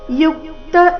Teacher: ಯುಕ್ತ ಯು ಮೇಲೆ ಆಘಾತ